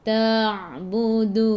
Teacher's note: Matikan dengan huruf nun. Hujung lidah menyentuh gusi atas.